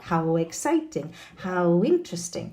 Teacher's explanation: when a word ending with W, such as how, no, is followed by a word beginning with a vowel sound. A W sound is inserted between the two words. · No, of course, if I say how, there's no need to exaggerate the w, no, but if I add a word beginning with a vowel sound, how exciting, how interesting, no, we get that very nice w sound to create the link